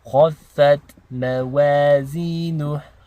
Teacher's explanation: وَأَمَّا مَنْ خَفَّتْ مَوَازِينُهُ. Again, the ta sakina, we want to have a very light t sound.